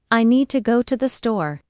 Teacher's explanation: Make need and store strong, and let to the be quick and light. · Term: rhythm